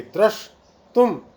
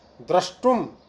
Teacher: तालव्य शकार को मूर्धन्य शकार हो जाएगा, और स्टुनाष्टु सूत्र के द्वारा तुम का जो तकार है उसको भी टकार होकर के द्रश तुम, ऐसी स्थिति बन जाएगी।